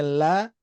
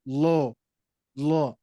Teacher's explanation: berharakat fathah ataupunah nantinya ya harakat fathah ataupun dah nantinya itu huruf lam ini menjadi tebal ya yang asalnya la menjadi lo lo